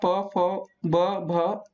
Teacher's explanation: ओष्ठ में आता है आपका प फ ब भ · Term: प वर्ग